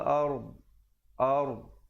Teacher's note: bawakan lidahnya ke tepi. Makhraj huruf yang terakhir adalah dhad.